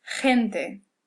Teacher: when it's before an E or before an I, it kind of sounds like a real hard H.